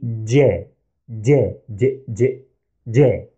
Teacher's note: You might think it has the same pronunciation as the English letter J, but here is a tiny difference. We add a slight D before the sound.